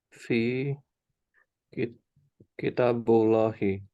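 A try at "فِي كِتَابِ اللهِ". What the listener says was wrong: Kan ada fi. Kitabnya jadi harokatnya kasroh dong. Kan huruf jar. Fi kitabillahi. Fi kitabillahi. Kan ketemu fi. Aslinya kan kitabullahi. Karena ada fi, kita harus ingat-ingat nih huruf jar yang kemarin kita belajari.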